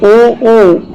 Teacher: जैसे ही हम ऊ का उच्चारण करते हैं तो हमारे होठ, हमारे लिप्स है वो वृत्ताकार हो जाते हैं